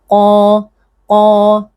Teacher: Perhatikan huruf tebal dengan menaikkan pangkal lidah, bukan memajukan bibir ya.